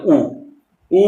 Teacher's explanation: ഉ ഊ എന്നൊക്കെ പറയുമ്പോൾ ചുണ്ടാണ് കൂട്ടുന്നത്